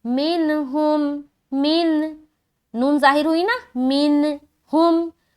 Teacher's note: تو اس میں سے حرف ہا آ رہا ہے، تو یہاں پر ہمیں اظہار کا قاعدہ کرنا ہے. تو نون کی آواز کو صرف ظاہر کرنا ہے اور آگے نکل جانا ہے. یہاں پر بالکل بھی رکاوٹ یا ناک میں آواز کا روکنا یا ناک میں آواز کو چھپانا، یہ ساری چیز نہیں کرنی. تو یہاں پر ہم سمپل پڑھیں گے منہم.